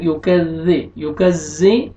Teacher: زال کو آپ نے نرمی سے ادا کرنا ہے، یکذی، یکذی، زا کو زور سے نہیں پڑھنا، زال زال ہے یہ